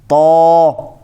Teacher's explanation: ہونٹوں کو گول کر کے نہیں، بلکہ زبان کی جڑ اوپر اٹھانے سے ہم نے اس کو موٹا کر لیا۔ اچھا، اب جب زبان کی جڑ ہم نے اسی حرف کی ادائیگی میں اٹھا لی تو اب یہ والا حرف نہیں رہا، تو اب یہ تا نہیں رہا بلکہ یہ کوئی اور حرف بن گیا ہے۔